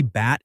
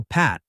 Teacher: For example, take the pair B and P bat is voiced, while pat is voiceless